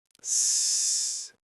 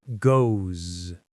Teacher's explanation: A lot of people might say it like a snake sound, s, like ghosts. But a native speaker with a general American accent will almost always make it a Z sound, a buzzing sound.